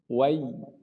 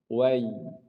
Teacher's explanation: Ya keluar dari wasatul lisan.